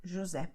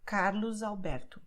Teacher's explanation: the letter S is between vowels, okay? So it sounds like Z